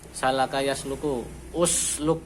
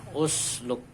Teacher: Nah, huruf ketiganya itu 2, 3 dhammah. Maka ini hamzah wasolnya dibaca dhammah.